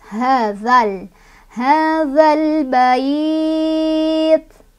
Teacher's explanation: Ini kan tadi alif lam komariyah ya, alif lam bertemu dengan huruf komariyah itu ba, maka cara bacanya alif lamnya dibaca jelas